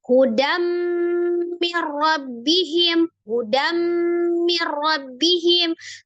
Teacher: Misal, hudam mir rabbihim, hudam mir rabbihim. Tuh ada tanwin ketemu dengan mim. Di idghamkan, dilebur, ditasdid ke mim dari hudan menjadi hudam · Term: idgham bi gunnah